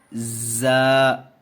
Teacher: زا سیٹی کی آواز نکال کر کے پڑھیں گے